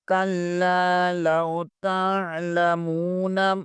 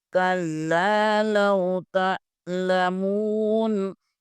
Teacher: لام، تعلم، میم واو پیش مو، تعلم، نون زبر نام، تعلمون، تا کو آئین کے ساتھ ملائیں گے، یہاں پر آئین ادا کریں گے، حمزہ نہیں پڑھیں گے